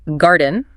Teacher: More like garden, with a clearly pronounced R sound and a clearer vowel sound